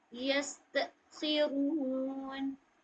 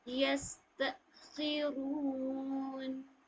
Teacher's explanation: सीन में भी देखिए सीटी जैसी आवाज आएगी